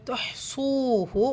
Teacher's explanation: இந்த ஹா சுக்குன் மெல்லிசாக ஓதணும். ஹா லைட்டான லெட்டர் இல்லையா, ஸோ துஹ்சூஹு வாவ் மத்தா 2 ஹரக்கத்.